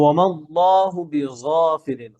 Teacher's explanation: জিহ্বার যে গোড়া এটা গলার ভিতরে ঢুকে দেন